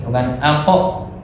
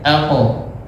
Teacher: Jangan diberi hamzah nih, bukan alpo, tapi biarkan ngalir.